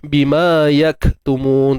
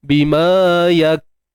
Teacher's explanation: kalau ikutkan dari sudut proses sebutan dia, kita nampak kita tahan suara dululah. Sebab tu kita kata syiddah kemudian baru hams.